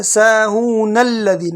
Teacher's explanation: نون کو آگے پھر لام کے ساتھ ملا دیں گے۔